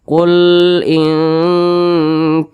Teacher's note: nah huruf Kaf ini dia berbaris ke atas maka dibaca panjang namanya Mad Thobi'i panjangnya itu dua harakat atau kira-kira dua ketukan